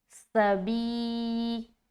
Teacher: با کو یا سے ملاتے ہوئے یا مدہ کریں گے تو ایک الف کھینچیں گے